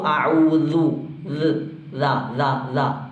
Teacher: ഈ ദാല് പലർ ഉച്ചരിക്കുമ്പോൾ തെറ്റാറുണ്ട്. ഈ ദാലിൻ്റെ മഖ്റജ് നാവിൻ്റെ അങ്ങേയറ്റവും അതുപോലെ തന്നെ ഈ മേലെ മുൻപല്ലിൻ്റെ അറ്റവുമാണ്.